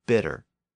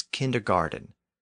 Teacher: in American English those words are usually pronounced with a D sound